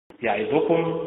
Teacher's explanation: يعظكم متعل بالنبر على حركة الياء